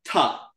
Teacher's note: you need to get your tongue to really touch your tooth so they're Dental